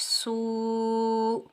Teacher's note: सीन के ऊपर पेश, सीन सख्ती और सीटी वाला हरफ है। सीन को हम वाव साकिन के साथ मिलाएंगे, एक अलिफ की मिकदार खींच कर अदा करेंगे।